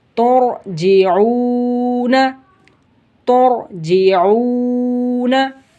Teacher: रा साकिन से पहले पेश आ जाए तो रा को मोटा करके पढ़ते हैं · वाव साकिन से पहले पेश है तो वाव मद्दा होगा, एक अलिफ की मिक़दार जितना खींच कर पढ़ेंगे।